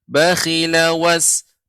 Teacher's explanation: Jadi langsung disambung. Jadi tidak diputus atau tidak dipanjangkan.